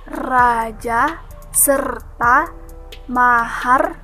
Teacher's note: R disebut juga konsonan vokal alveolar, termasuk bunyi suara yang dibentuk dengan menempelkan ujung lidah pada gusi, kemudian menghembuskan udara sehingga lidah tersebut secara berulang-ulang menempel dan terlepas dari gusi